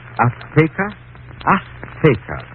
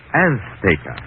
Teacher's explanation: She gave the Z a TH sound. That's Castilian Spanish. Mexican or any Spanish American would say Azteca.